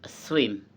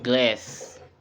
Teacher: voiceless, alveolar, and fricative. Air flows through a narrow gap at the alveolar ridge without vocal cord vibration